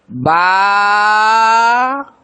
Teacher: الف با، آپ نے اس کو نہ اتنا زور دینا ہے اور نہ اس کو جھٹکے کے ساتھ پڑھنا ہے، جیسے با غلط ہے یا با یہ بھی غلط ہے۔ نرمی کے ساتھ اس کو ادا کرنا ہے دونوں ہونٹوں کی تری سے